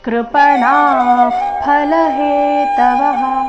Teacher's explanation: ಕೃಪಣಾ ಣ ದೀರ್ಘ ನಂತರ ವಿಸರ್ಗದ ಉಚ್ಚಾರಣೆ ತಗೊಳ್ಬೇಕು